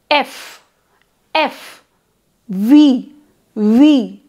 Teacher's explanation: those with lip to teeth contact are called labiodental